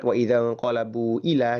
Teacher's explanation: bunyi panjang yang ada di ujung kata inqalabu di akhir kata inqalabu bertemu dengan hamzah di awal kata ila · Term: mad munfasil